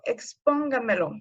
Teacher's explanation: Por ejemplo, expóngamelo, su sílaba tónica es pon. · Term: sobresdrújulas